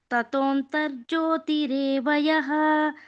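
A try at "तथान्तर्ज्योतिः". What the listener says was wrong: second line ಮಾತಾಜಿ ತಥಾಂತರ್ಜ್ಯೋತಿ ತತೋ ಅಲ್ಲ ತಥಾಂತರ್ಜ್ಯೋತಿ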